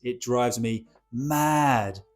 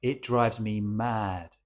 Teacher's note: I kind of turn that short vowel of mad into a long vowel sound to really emphasize how I am feeling